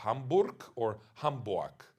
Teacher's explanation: as a German, he did not have the R sound as phonemic